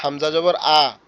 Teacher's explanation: হামজার আওয়াজটা একটু ধাক্কা দেওয়ার মতো হবে, হামজা, মনে হবে কি ফেলে দিচ্ছি মতো, হামজা বা ধাক্কা দিচ্ছি এরকম।